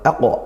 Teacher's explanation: kita baca Qalqalah Kubro dipantulkan kuat